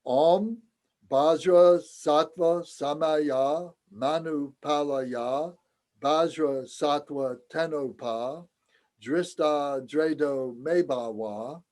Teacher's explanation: let's do a chant where every syllable has an equal weight and there's no real melody to it